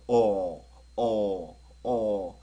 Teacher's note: 어 발음과 오 발음의 중간 정도 되는 거 같아요